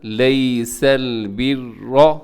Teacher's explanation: اس میں را موٹا پڑا جائے گا کیونکہ را کے اوپر حرکت ہے۔